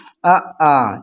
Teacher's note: जब हम छोटा आ बोलते हैं या बड़ा बोलते हैं या आ बोलते हैं तो कहाँ से हमारी वॉइस निकलती है, कंठ से निकलती है